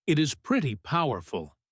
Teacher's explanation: Here pretty powerful is a phrase where the stress is on powerful. Pretty acts as an amplifier but it is not stressed.